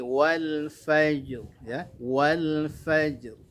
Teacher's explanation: Karena huruf sebelumnya sukun, lalu huruf sebelum huruf sukun itu adalah huruf yang dibaca fathah, maka ra-nya harus dibaca tebal atau tafkhim